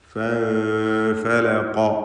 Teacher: ഫൻഫലഖ സാക്കിനത്തായ നൂനും ശേഷം ഫാഉം ഇഖ്ഫാ ഹഖീഖി നൽകി മറച്ചു മണിക്കണം നൂനിനെ. ഫൻഫലഖ ഖാഫിന് തഫ്ഖീം തടിപ്പിച്ച് ഖാഫ് ഉച്ചരിക്കുക